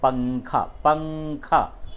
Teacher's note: اور تنوین کے بعد وہ 15 حروف اخفا جب آوے تو ناک میں آواز لے جا کر کے اسے گنگناتے ہیں